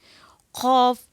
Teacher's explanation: غین کے مخرج سے اوپر والی جو جگہ ہوتی ہے یہاں سے ادا ہوگا زبان کی جڑ، اور لحات کے مقابل تالو سے ہم خاف کو ادا کریں گے